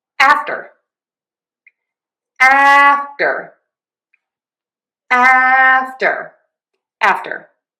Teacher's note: You can totally say after review with the true t and that's fine but I am going to be pronouncing it with a flap t which I like to say think about as just a super fast d sound